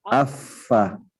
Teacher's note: dua gigi seri atas ini bertemu dengan bibir bawah bagian dalam kalau kita diam sejenak seperti ini Nah itu bersentuhan tuh kerasa